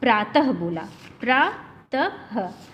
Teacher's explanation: तो प्रातः में आपने देखा कि ह की ध्वनि निकल रही है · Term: विसर्ग